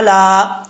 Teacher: عین کو پڑھتے وقت حمزہ کی آواز نہیں آنی چاہیے، عین زبر را، را، علا، اس طریقے سے۔